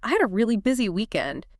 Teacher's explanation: It's about how you say it, emphasizing that word really. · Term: emphasis